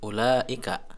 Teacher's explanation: Ada mad, ya, madnya pada huruf la ini bertemu hamzah dalam satu kalimat, ya. Ulaika, ini mad wajib muttasil. Panjangnya 5 harokat.